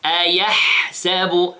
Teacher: Notice the hams, the sound of the ha.